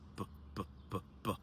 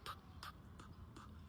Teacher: In order to actually see what the difference is, you're going to take your hand, put it over your throat, not like that, and first go p, p, p, p, and then b, b, b, b. You should notice that when you make these B noises, that your vocal cords vibrate in a way that it doesn't when you make the P sounds. And that, in truth, is the only difference.